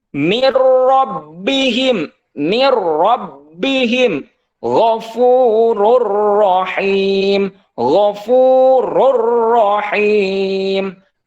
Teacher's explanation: nunnya hilang karena sudah dimasukkan ataupun dilebur, dimasukkan ke huruf ro. Mir rabbihim ghafurur rahim.